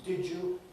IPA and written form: ˈdɪʤu (did you)